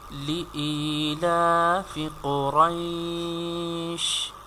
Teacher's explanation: we have to stretch it due to ya is madda letter here